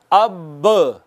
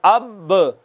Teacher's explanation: दोनों होंठों का जो अंदर वाला तर हिस्सा है वो मिलता है तो बा अदा होती है। ये है बा का मखरज।